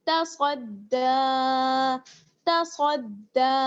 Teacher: دال جو ہے وہ باریک پڑھی جائے گی اور کھڑا زبر ہے اس لیے کھینچیں گے دال کو